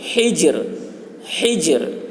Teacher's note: جیم میں قلقلہ کریں گے اور را کی آواز را کو باریک پڑھیں گے